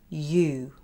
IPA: juː